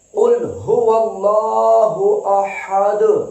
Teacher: جب یہ ساکن ہوگی دال تو پھر ہلانا ہے، جنبش پیدا کرنی ہے، قلقلہ کرنا ہے